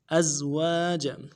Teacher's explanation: لفظ ازواج میں حمزہ کو زا کے ساتھ ملانا ہے، سیٹی والا حرف ہے، آواز جاری رہے گی۔ واو کے بعد الف مدہ ہے، ایک الف دار میں کھینچیں گے، جیم کو نرمی سے ادا کریں گے۔